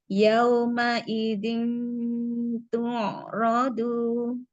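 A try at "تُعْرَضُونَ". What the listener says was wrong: Tu'radu. Rodu. Dotnya juga diangkat lagi. Huruf ainnya di sini alirkan lagi bainiyahnya Umi seperti dia sedikit menekan ke belakang, menyempit ya. menyempit ke belakang. Tu'radu. Rodu. Coba bodnya du.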